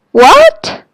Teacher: start in in the middle of your voice and go up it's a rising tone just like when someone tell you something really crazy and you say what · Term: second tone